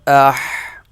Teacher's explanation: یہ گلے کے درمیان سے ادا ہوگا